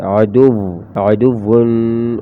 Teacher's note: عین کی آواز گلے سے